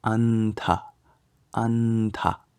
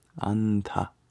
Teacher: You just nasalize before the T sound, anta. And then the visarga is very similar, but instead of nasalizing, you aspirate. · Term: anusvara